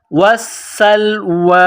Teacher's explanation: سین میں سیٹی کی آواز پیدا کرنی ہے.